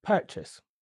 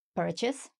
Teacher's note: It's always going to be on the first syllable.